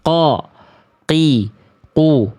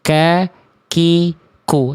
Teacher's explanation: qof itu enggak boleh keluar nafas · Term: qaf